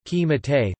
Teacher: the first shva in the word קִמַּטְתְּ 'you (fem.) crumpled' is pronounced /e/ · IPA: /kiˈmatet/